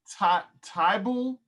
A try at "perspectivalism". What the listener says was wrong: Tyval with a V.